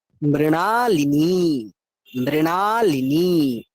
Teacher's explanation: মৃণা সময় নিলাম, লিনি লিয়ে সময় নিলাম না কিন্তু